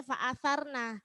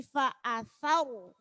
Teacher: karena di situ ro sukun, sebelumnya adalah fathah maka dibaca tafkhim, dibaca tebal